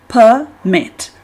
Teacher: Consiste en dos sílabas, el acento, la fuerza de pronunciación se halla en la sílaba mit